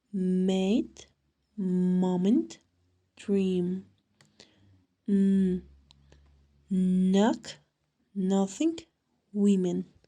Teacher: The sound is produced by letting air pass through the nasal cavity only. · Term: Nasals